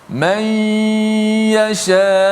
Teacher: Nun tu dimasukkan ke dalam huruf ya, dan kita baca dengan ma'al gunnah. Baca dengan gunnah. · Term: idgham